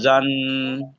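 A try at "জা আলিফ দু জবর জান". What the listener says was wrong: জ নাই, বলেন জা।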